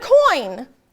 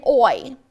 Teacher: a diphthong, which is two vowels combined to make a whole new sound